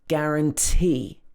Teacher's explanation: Again, stress on the last syllable. If a word ends in T or E, often it will be stressed at the end.